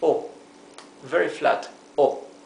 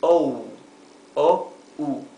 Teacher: In Spanish this is O, very flat, O. In English it is O, O-U.